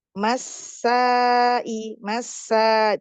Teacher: mad wajib muttasil wajib ya dibaca empat atau lima harakat